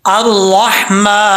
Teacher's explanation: را کے بعد ہا بریک ہے، اس کو بریک پڑھیں گے کلیئر ساؤنڈ کے ساتھ